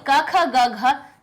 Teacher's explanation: क वर्ग क्यों आता है, क्योंकि ध्वनि सबसे पहले कंठ से टकराती है, इसलिए क ख ग घ सबसे पहले हम व्यंजनों में लिखते हैं, क्योंकि ध्वनि का पहला नंबर का स्थान हमारा कंठ होता है और कंठ से निकलने वाली ध्वनि हमारी कौन सी होती है, क होती है।